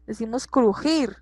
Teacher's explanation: el sonido de la J es más golpeado que la G